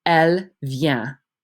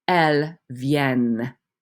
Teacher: the ENT is not pronounced, but it does make you pronounce that double N